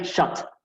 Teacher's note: como una O bastante abierta no medio similar a una a no es ni o ni una o ni una A es